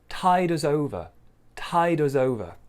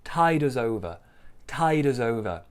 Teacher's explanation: big stress on tide and then smaller stress on over